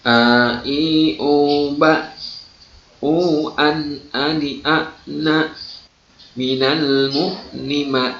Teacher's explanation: A akan terasa, ya, keluar dari tenggorokan paling jauh atau pangkal tenggorokan atau aqsal halqi, ya. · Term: huruf hamzah